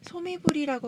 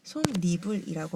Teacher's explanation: 소미불이라고 발음하지 않고 솜니불이라고 발음되죠. 니은이 첨가되어서 발음됩니다.